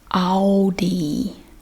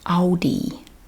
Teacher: We just take out the L and replace it with the W.